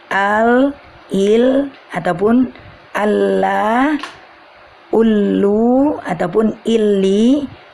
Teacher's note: dua sisi yang kita pertemukan dikala mengucapkan huruf lam Hai yaitu tepi lidah bagian bawah sampai kepada ujung lidah bertemu dengan ujung langit-langit